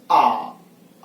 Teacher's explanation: जब हम मुख खोलते हैं तो आ में क्या हुआ? पूरा मुख द्वार खुला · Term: विपरीत